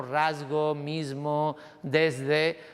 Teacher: la S sonora solo aparece en palabras como rasgo, mismo, desde, donde la S va seguida de una consonante sonora